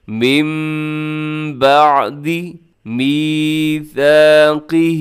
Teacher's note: نون ساکن کو اپنے میم کے ساتھ تبدیل کر دینا ہے · من بعد میثاقہ، اس میں قاف کو اپنے موٹا پڑھنا ہے، اور میثا میں جو ثا ہے اس کے اندر سیٹی آپ نے نہیں ڈالنی، سیٹی سے بچنا ہے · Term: اقلاب